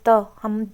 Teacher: कि दांतों से बोल के देखो, त हमारी जीभ किसको टच कर रही है? दांतों को। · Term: दंती वर्ण